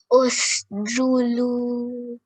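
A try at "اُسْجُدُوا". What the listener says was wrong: Usjudu. This is, I know it looks like a lam, but this is a dal. A lam has a much longer line, straight up like that. A dal is much more curved here.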